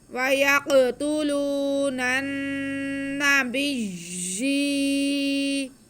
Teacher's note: نن نن وَيَقْتُلُونَ وَيَقْتُلُونَ آگے با کے نیچے زیر ہے اور یا مشدد ہے، با کا زیر ہم یا کے ساتھ ملائیں گے اور یا کے نیچے کھڑا زیر ہے، کھڑے زیر کو ہم یا مدہ کے برابر یا الف ایک الف کے برابر کھینچ کے پڑھیں گے۔